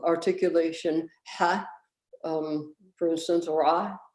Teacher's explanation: epiglottalization colors the vowel by lowering and or centralizing it, actually fronting the low vowels and centralizing everything else and muffling it tremendously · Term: true epiglottal articulation